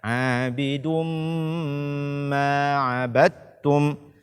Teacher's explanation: tidak memberi hak gunnah pada kata abidum ma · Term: idgham bi gunnah